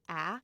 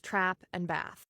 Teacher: General American accents like mine use the trap vowel, ah, for both words, trap and bath. But, the RP accent features a split between the word trap and the word bath, where bath shifts toward a broad ah sound.